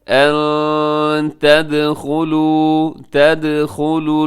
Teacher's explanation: ان تدخلوا الجنة، ان تدخلوا، یہاں پہ نون ساکن ہے، نون ساکن کے بعد تا ہے تو یہاں پہ آپ اخفا کیجیے گا۔